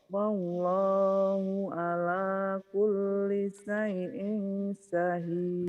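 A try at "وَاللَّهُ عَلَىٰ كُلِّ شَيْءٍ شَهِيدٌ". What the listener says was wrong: Tuh hutang shinnya ya Bu ya. Hutang shin. Harusnya gini Bu. Wallahu ala kulli syai'in syahid. Shin.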